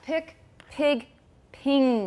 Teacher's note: whenever we have velar raising of a vowel the vowel is a little higher than normal then we can put that mark under it which means raise